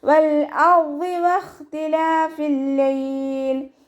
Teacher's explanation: വാവ് ഉച്ചരിക്കുന്ന സമയത്ത് ചുണ്ടുകളെ വട്ടത്തിൽ പിടിക്കാൻ ശ്രദ്ധിക്കുക. ലാമ് ഖൽഖല ലെറ്ററില്ലാത്തത് കൊണ്ട് ഹാഫ് സുക്കൂന് കൊടുക്കുക.